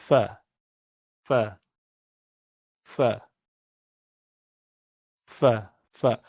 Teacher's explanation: Fa in Arabic is pronounced with the incisors, upper incisors, touching the wet part of the lips.